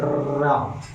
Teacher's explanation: जैसे रा होता है, इसे लुंठित बोलते हैं। लुंठित मतलब जब हम इसका उच्चारण करते हैं तो हमारी जीभ लुढ़कती हुई यानी पलट जाती है। जैसे रा बोलते हैं तो पलट जाती है, और इसे हम देर तक उच्चारण कर सकते हैं, जैसे रा।